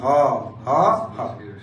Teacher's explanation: ফুসফুস থেকে ভিতর দিয়ে একটা ধ্বনি উৎপাদন হয়, এটাকে বলে কণ্ঠ নালীয় ধ্বনি